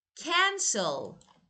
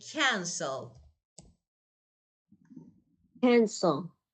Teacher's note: cancel is verb, but stress is on the first syllable